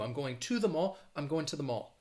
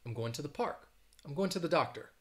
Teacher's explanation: say that schwa instead of saying to